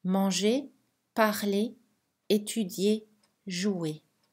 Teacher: la lettre R est silencieuse dans les verbes en ER à l'infinitif.